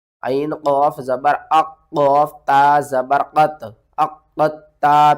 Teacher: آپ نے قاف کو تا کے ساتھ ملانا ہے، تا کے اوپر سختی کرنی ہے، قاف کو بھی ہم نے 2 بار پڑھنا ہے، قاف کو موٹا کر کے پڑھنا ہے، اور قاف کے اوپر بھی سختی کرنی ہے۔